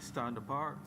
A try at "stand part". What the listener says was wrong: Stand part. Part. P-A-R-T. Part. Not apart. Part.